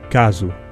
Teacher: in Portuguese the letter s is pronounced Z between two vowels like in the word gazu here's the rule notation that tells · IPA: [kazu]